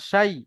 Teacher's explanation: লিনের পড়া, নরম আওয়াজে তাড়াতাড়ি পড়তে হবে।